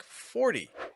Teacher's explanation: R plus T plus vowel makes a flap T sound or fast D sound